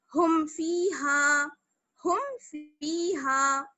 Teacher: یعنی آواز کو جلدی سے پڑھیں گے, بنا غننے کے پڑھیں گے اور ظاہر کر کے پڑھیں گے, یعنی میم کی آواز بالکل ظاہر ہونی چاہیے, دونوں ہونٹ مل جائیں گے, اس لیے شفوی کہلاتا ہے. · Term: اظہار شفوی